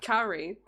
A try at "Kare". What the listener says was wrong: Kare. You're saying it weird. It's Kare. No, like Kare. Kare. No, it doesn't end on an E. It ends on an A. Kare.